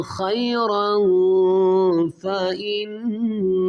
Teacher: زبر رن پہ، کیونکہ یہاں اس کے آگے دیکھیں گے تو دو زبر کی تنوین کے بعد حروف اخفا میں فا ہے تو اخفا غنہ کریں گے